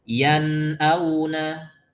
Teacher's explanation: Jadi jangan terputus yan auna. Nah, ketika kita mengucapkan yan itu dari hidung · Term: izhar